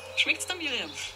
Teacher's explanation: Wir sehen hier erneut dieses da statt dir, schmeckt's da, weil hier auch dieses dir, das Personalpronomen dir nachschmecken kommt und damit unbetont wird. Und wir sehen auch, dass das S mit dem Verb verschmolzen wird. Also schmeckt es wird zu schmeckt's.